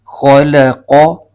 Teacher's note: خا قاف یہ دونوں حروف مستعلیہ کے حرف ہیں، ان دونوں حرفوں کو پر کرنا ہے اور لام باریک آواز میں